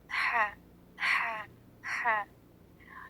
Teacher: ये हलक के दरमियानी हिस्से से अदा होता है, the middle part of the throat. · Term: वसतुल हलक